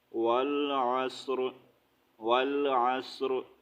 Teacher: والعصر، را زیر ری، والعصر، والعصر، صرف ہم نے را کی ہلکی سی آواز نکالنی ہے، ٹھیک ہے۔ یہاں پر زیر بھی نہیں ریڈ کرنی اور پورا را بھی نہیں پڑھنا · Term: را کو ہم ساکن